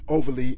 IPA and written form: 'ovɚli (Overly)